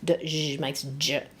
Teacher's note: this one is a d and then a zh pushed together. D, zh makes j.